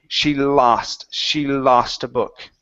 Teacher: it hits the top of the mouth with the L it's very light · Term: very smooth l sound